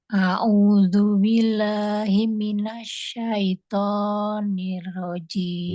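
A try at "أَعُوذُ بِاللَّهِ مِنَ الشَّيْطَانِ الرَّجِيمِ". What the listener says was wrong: Ya, mohon izin lafal jalalahnya jangan buru-buru. A'udzubillah.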